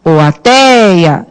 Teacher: É o tei que você fica mais tempo pronunciando. Então, está aqui a sílaba tônica, ó.